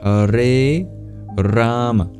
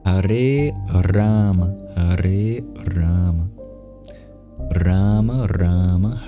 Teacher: the A in Rama, the first A is twice as long.